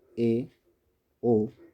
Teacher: जिन स्वरों के उच्चारण में मुख द्वार आधा बंद रहता है। इसके अंतर्गत ए, ओ को रखा जाता है। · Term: अर्ध संवर्त